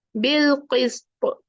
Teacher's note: اگر ہمیں کہیں اس پہ رکنا پڑے حالانکہ پا کا اپنا ایک کسرہ ہے بٹ کیونکہ ہم نے رکنا ہے تو ہم کیا کریں گے اس کو کلکلا کریں گے